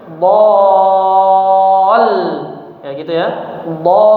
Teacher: Kemudian setelah dipanjangkan enam harakat huruf dad, baru kita tasdidkan, kita idghamkan ke huruf lamnya disertai dengan sedikit penambahan volume suaranya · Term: tasydid